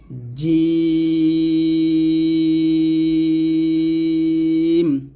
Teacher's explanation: জিহ্বার মধ্যখান তার বরাবর উপরে তালুর সঙ্গে লাগবে